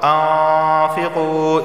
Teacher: أَنفِقُوا نون ساکن کے بعد فا آیا ہے اور فا حروف اخفا میں سے ہے تو اخفا والا غنہ ہوگا یعنی زبان کی نوک اوپر کے تالو سے نہیں لگے گی اور غنہ ہوگا